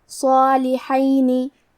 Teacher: کلمت صالحینی میں حرف الصاد ہے اور اس کے بعد مد الف ہے، کیونکہ مد الف اپنے پیچھے والے حرف کا حکم لیتا ہے تفخیم میں اور ترقیق میں، تو ہمیں صاد کو اور مد الف کو دونوں کو بھاری آواز میں ادا کرنا ہے۔ صالحینی۔ حرف الحاء پہ زبر ہے تو ہم زبر کو ظاہر کریں گے۔